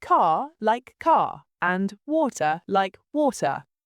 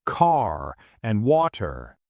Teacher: >> In British English, especially in standard southern British accents, we're what's called nonrodic. That means we don't pronounce the R at the end of words or before consonants